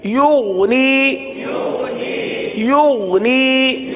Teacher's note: غین میں قلقلہ نہیں ہوتا اور غین کو گاف کی طرح نہیں پڑھتے